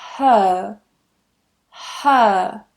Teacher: if you want that accent and you want to soften your own accent and sound a little bit more British then removing that r is what you can do